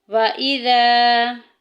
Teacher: الف ساکن پیچھے زبر آ گئی ہے، الف مدہ کا قاعدہ جاری ہو رہا ہے، ایک الف کے برابر لمبا کریں گے